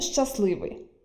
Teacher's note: У слові «щасливий» відбувається спрощення «стл» на «сл» (від слова «щастя» мав залишитися «т», але він випадає).